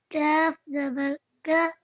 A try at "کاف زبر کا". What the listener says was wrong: کیف نہیں پڑھنا نا، کاف زبر کا،